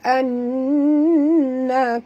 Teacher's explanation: nun bersabdu wajib dengung, dua harakat